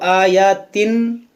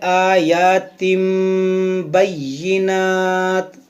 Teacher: मीम यहाँ पर इसलिए आया क्योंकि तनवीन के बाद हरफ बा है, यहाँ पर होगा इक़लाब, इसको आयातिन ऐसे नहीं पढ़ेंगे बल्कि पढ़ेंगे आयातिम बय्यिनात।